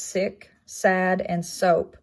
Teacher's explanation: it is an alveolar it is not voiced